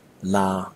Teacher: you need a long lingering stretched out vowel don't pronounce it like your being cut short or interrupted as